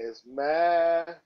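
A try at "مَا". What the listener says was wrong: Why you say ah at the end? There's no ah here. Ah is the sound of Hamza. We don't see any Hamza here.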